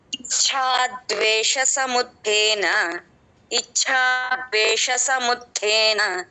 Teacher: తేన తే కింద ఉన్న అక్షరం మహాప్రాణ అక్షరం అండి నా నుంచి కలపాలి ధకారం కాదు త అది ఒత్తుత చూసుకోవాలి